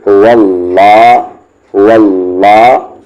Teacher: جیسے یہاں پر آپ دیکھ رہے ہیں واو پہ زبر ہے تو یہ لام جلالہ ہیوی پڑھا جائے گا، یعنی اس اللہ کے لام کو موٹی آواز سے پڑھیں گے